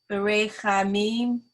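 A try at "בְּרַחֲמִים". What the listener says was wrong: Wait. The vowel under the resh.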